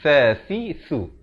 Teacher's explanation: Si di hujung lidah keluar.